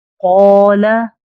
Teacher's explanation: जैसे قولا, यहाँ अलिफ खाली, उससे पहले हुरूफ मुस्तालिया में से कौफ है, तो कौफ की वजह से अलिफ को पुर अदा किया गया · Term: अलिफ मोटा